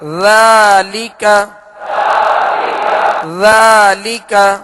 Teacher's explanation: ذال کو نرمی کے ساتھ ادا کرنا ہے، اس میں بالکل سیٹی کی آواز پیدا نہ ہو. اور ذال پر کھڑا زبر ہے جو الف مدہ کے قائم مقام ہے، جسے ایک الف یعنی 2 حرکت کے برابر کھینچ کر ادا کریں گے. · لام کے نیچے زیر ہے اور بغیر کھینچے بغیر جھٹکا دیے معروف پڑھیں گے